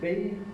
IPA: b